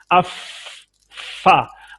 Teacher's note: बस देखिए फा, अब फा उस वक्त तक नहीं निकलेगी जब तक ये ऊपर के दांतों को हम ये होंठ के साथ नहीं मस करेंगे। अफ फा, अफ निकला होंठ से है लेकिन दांत ने मामलत की है, तो हम ये नहीं कहेंगे कि दांतों से निकला है, बल्कि ये कहेंगे कि ये फा होंठ से निकला है।